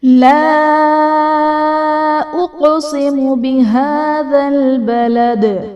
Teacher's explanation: بہذا البلد میں ہا پر کھڑا زبر ہے جو کہ الف مدہ کے قائم مقام ہے، اس لیے اسے ہم ایک الف یعنی دو حرکات کے برابر کھینچ کر پڑھیں گے